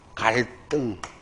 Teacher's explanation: 리을 받침 뒤에 디귿 시옷치읓 얘는 된소리로 말하면 됩니다